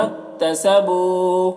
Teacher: تسبو بو میں واو مدہ ہے، ایک الف کے برابر کھینچیں گے